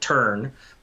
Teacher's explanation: So there's not a rule about whether there's a vowel at the end, because, for instance, turn. Obviously, in American or Canadian English, we pronounce that R hard